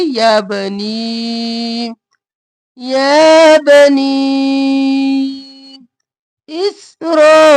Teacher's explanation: با کے اوپر حرکت ہے، جلدی سے پڑھیں گے، با زبر با، یا با، اور نی کو 3 الف کے برابر کھینچیں گے